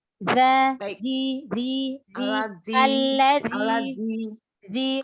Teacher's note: Ya. Alladzi, huruf za, huruf tipis, za makharijul hurufnya, ujung lidah bertemu dengan ujung gigi sari atas. Jadi keluarin sedikit lidahnya.